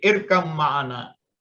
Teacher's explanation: teknik pengucapannya sama sama-sama menggunakan dua bibir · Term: dilebur